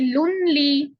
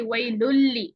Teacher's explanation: बिल्कुल नून को आपने बीच में से गायब कर दिया।